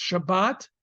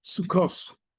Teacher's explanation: It's going to be a hard T no matter what, with or without a dot. In Ashkenazic lands in Europe, they adopted an S sound for it.